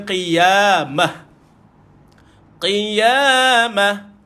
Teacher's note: Tuan-tuan matikan betul, tapi dia bukan mati dengan ta. Dia mati dengan ha. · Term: ta marbutah